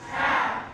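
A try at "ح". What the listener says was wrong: Biraz daha kalın. Ha.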